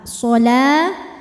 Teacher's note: Cara bacanya dipanjangkan lamnya 2 harokat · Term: mad tabi'i muqaddar